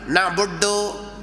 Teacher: Dia lipat ujung lidah, maka bunyi dal dia tu agak ganjil sikit. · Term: dal India